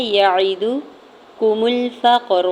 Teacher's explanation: فا کی زبر کو قاف ساکن کے ساتھ ملاتے ہوئے کلکلا کرنا ہے۔ قاف ساکن پہ، را کو زبر کی بیس پہ پر پڑھیں گے، ٹھیک ہے۔